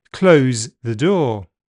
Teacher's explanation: The voice th gelled with z.